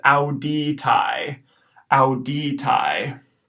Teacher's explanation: we've got an AE diphthong at the end that'll be pronounced I